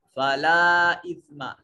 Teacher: ला के ऊपर जो है ये छोटी मद है, इसको कम अज कम 2 अलिफ के बराबर लंबा करेंगे